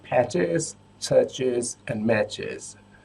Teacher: We also have the is sound after the ch sound, like in patches, churches, and matches.